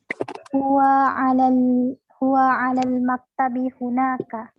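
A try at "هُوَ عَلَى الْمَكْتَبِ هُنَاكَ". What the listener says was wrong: Ahsant. Baik. Ahsant.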